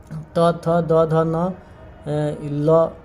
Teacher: ल का उच्चारण स्थान होता है दंत। त, थ, द, ध, न, ल का भी दंत होता है।